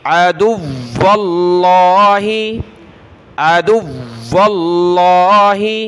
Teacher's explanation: واو کے ساتھ واو کو لفظ اللہ کے ساتھ ملانا ہے واو کے اوپر تشدید ہے تو اس کو سختی کے ساتھ پڑھنا ہے عدو اللہ بہت سارے یہاں غلطی کریں گے دال کو سخت